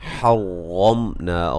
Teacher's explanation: را کو موٹا ادا کریں گے، ٹھیک ہے، اور میم کو یہاں میم ساکن کا کیا ہو رہا ہے، اظہار ہو رہا ہے، غنہ نہیں کریں گے۔